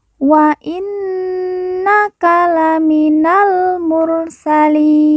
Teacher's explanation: Nun yang bertasydid kita baca ditekan, ditahan 2 harokat dan didengungkan.